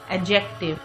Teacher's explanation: the D sound is silent, it is not pronounced